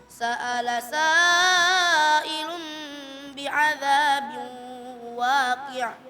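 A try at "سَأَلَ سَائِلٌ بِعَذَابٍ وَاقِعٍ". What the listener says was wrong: Sa'ilun di sini seharusnya bacanya 4 atau 5. Tadi agak sedikit kurang ya. Jadi perlu disempurnakan lagi. Gak apa-apa, sempurnakan ke 5 harakat saja.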